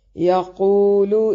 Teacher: یا کو باریک اور قو کو موٹا یعنی قاف موٹا پڑھیں گے ، قو واو مدہ ہے، لام کو بھی باریک پڑھتے ہیں،